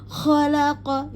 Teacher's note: kha ada di ujung tenggorokan. Jadi jelas ya, terbaca keruh ya. Khalaq ini enggak ada panjang.